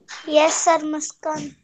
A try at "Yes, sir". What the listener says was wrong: why are you speaking from your nose? You said, yes, sir. This way you are speaking.